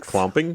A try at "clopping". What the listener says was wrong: There's no M.